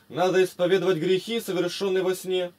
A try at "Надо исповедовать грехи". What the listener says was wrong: Надо исповедовать, не туда ударение делаешь.